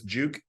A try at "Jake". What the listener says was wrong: Jake. It's supposed to be an A.